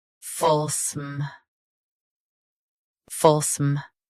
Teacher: Both US and UK have the same pronunciation of this word. Stress full. Keep SM soft and quick.